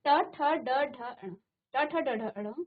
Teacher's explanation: ये मूर्धा पर स्पर्श करती है। आपकी जीभ आपके मुख के अंदर जो मूर्धा स्थान होगा उस पर स्पर्श करती है। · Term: ट वर्ग, मूर्धन्य